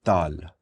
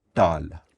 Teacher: when your tongue hits the back of your teeth you make a particular sound which is a retroflex sound